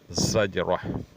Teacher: ज़ा जो है हुरूफ सफ़ीर में से है, इसे इस तरह अदा करनी चाहिए कि सीटी सी आवाज़ निकले